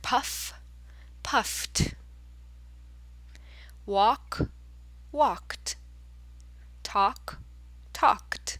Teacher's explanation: the ed at the end of the past tense will sound like a t. It'll sound like t.